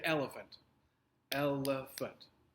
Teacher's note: The first syllable is emphasized. It is stressed. You stress that more when you say it.